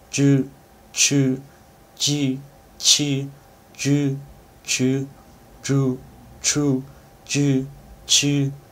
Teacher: I believe I took the aspiration out of those affricates, and those should all be your voiceless affricates too. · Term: voiceless unaspirated affricate